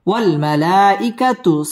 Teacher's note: মদ্দে মুত্তাসিল চার আলিফ টেনে পড়তে হবে